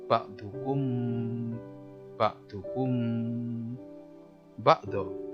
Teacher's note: Jadi cara bacanya ya samar-samar di bibir antara mim dan ba.